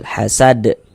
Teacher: Kemudian ini huruf dal mantul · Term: huruf qalqalah